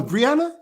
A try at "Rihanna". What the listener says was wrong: No, Rihanna. without the B.